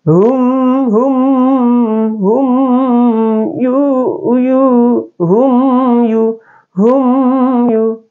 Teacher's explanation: Cara bacanya izhar syafawi, yaitu huruf mim sukun dibaca dengan jelas, tidak dengung ya